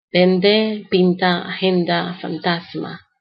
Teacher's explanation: the N becomes dental when it's in front of the da and ta that are dental too. Because in Spanish, the da and ta are dental.